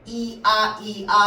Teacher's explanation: 이게 지금 뭐 발음하는 거냐면 야 발음하는 거거든. 앞에 뭐냐면 이라고 하는 입모양을 만들어 놓고 아를 발음하잖아. 그러면 야가 나오는 거야. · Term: 이중모음